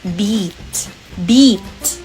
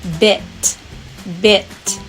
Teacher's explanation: the long e sound which is sounded as ee like in sheep and the short i sound which is sounded as e like in ship